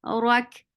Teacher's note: Ra is heavy for fatha when you just attach with kaf. Kaf will get sifa of hams.